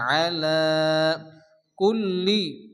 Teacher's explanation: খারাজ জবর আলিফ মাধ্যের মধ্যে এক আলিফ টান হবে আলা কুল্লি লামের উপরে তাসদীদ দুবার উচ্চারণ হবে